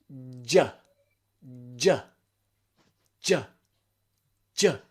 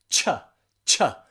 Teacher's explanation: So your tip of your tongue on the alveolar ridge, and then you take it down and put it into the position of the CH. But it's all got to be done really, really quickly, okay?